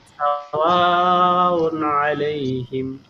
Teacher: সাওয়া এখানে চার আলিফ টান আছে